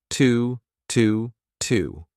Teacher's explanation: instead of saying to, you can say T, a very unstressed T, but connect it to your next sound.